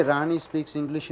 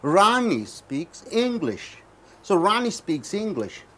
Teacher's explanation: it should go up the Rani should be raised up English should be raised up speak should be lowered